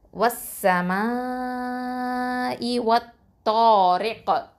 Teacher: கல்கலா குப்ரா கொடுக்கணும், ஓகேவா? அசைச்சு ஓதணும்